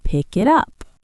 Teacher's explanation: a native speaker doesn't stop between the words. It sounds like one long word, "pick it up". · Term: linking